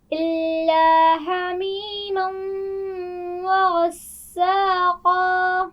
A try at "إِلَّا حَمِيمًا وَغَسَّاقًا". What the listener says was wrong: حمیم، ہا کے مخرج کو واضح کیجئے.